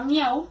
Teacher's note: encontramos tres vocales en una sola sílaba, no se está separando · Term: triptongo